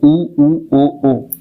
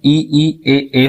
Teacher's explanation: जिसके उच्चारण में वृत्त की आकृति बनती है आपकी ओठ की एक प्रकार से मुंह की तो उ ओ ओ ये जो है वृत्ताकार हो गए।